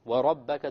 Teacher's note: the ra will be heavy because it has a fatha.